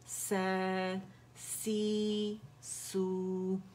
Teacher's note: ان تینوں لیٹر میں سین زا میں سین میں اس میں بزنگ ساؤنڈ جیسے شہد کی مکھی کرتی ہے، اسے جب ادا کرتے ہیں تو اس میں یہ آواز بنے، اسے کہتے ہیں صفیر ہے، ٹھیک ہے. اس میں صفیر ہے، سیٹی کی آواز ہے، چڑیا کی سی آواز